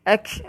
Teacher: Ak, keluarkan angin yang dipanggil hamas.